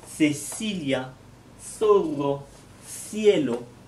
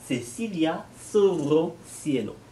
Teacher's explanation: Le premier, c'est le son des lettres C, CE, CI ou Z. Pour les prononcer, il faut que vous mettiez la langue entre les dents.